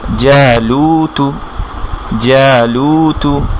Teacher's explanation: জ্যা এক আলিফ মাদ, লু এক আলিফ মাদ, তুতে কোনো টান হবে না